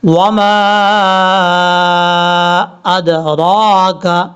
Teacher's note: میم کے آگے جو الف ہے، اس الف کے اوپر مد ہے، اس مد کو مد منفصل کہا جاتا ہے، اور یہ 2.5 الف کے برابر، آپ نے 2 الف 2.5 الف کے برابر لمبا کرنا ہے۔